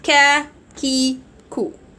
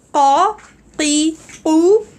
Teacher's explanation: So qaf, as you see here, is back part more than kaf. Kaf is a little bit after qaf towards the mouth, and qaf is closer to the throat.